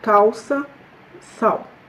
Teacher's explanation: si le L est à la fin de la syllabe, ou ici c'est un mot monosyllabe, donc il va être prononcé comme OU